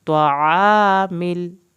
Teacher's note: عین کو حلق سے پڑھیں, مل اس میں لام نہیں ہلنا چاہیے.